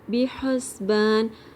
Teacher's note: با کی زیر کو مجھول نہیں کرنا آپ نے، بے نہیں پڑھنا، بی پڑھنا ہے. حسبان، ہا کی آواز واضح، سین کی سیٹی پرومیننٹ